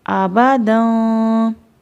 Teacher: تنوین پڑھتے ہوئے ناک میں آواز جاتی ہے، یعنی کہ غنہ ہوتا ہے۔